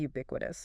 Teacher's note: Four syllables. Yeah. And the stress is on the second one.